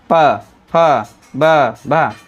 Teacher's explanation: तो option A यानी दोनों होस्टि दोनों होस्ट का यानी ऊपर और लोअर लिप्स जो भी हैं दोनों का हम उपयोग कर करके ही बोलते हैं। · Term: प वर्ग